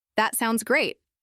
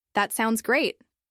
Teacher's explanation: That sounds great, with a rising intonation could express excitement. That sounds great, with a falling intonation could express calm approval.